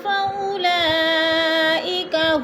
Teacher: فَأُولَا میں مد متصل ہے، 4 الفی مد ہے، 4 حرکات کے برابر ہم نے اس کو کھینچ کر پڑھنا ہے